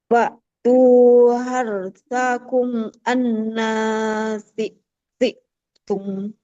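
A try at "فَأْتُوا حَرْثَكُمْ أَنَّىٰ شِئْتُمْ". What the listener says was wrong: Nasyi. Coba Ibu huruf syinnya sya. Nah, ya, tengah lidahnya menempel ke langit-langit atas ya. Syi'tum. Syi'tum. Dari fa'tu, coba Ibu dulu. Fa'tu harsakum anna syi'tum.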